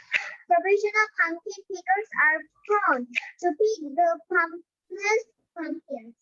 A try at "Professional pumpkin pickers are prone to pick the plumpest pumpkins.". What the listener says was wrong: Very good, সুন্দর হয়েছে, very good.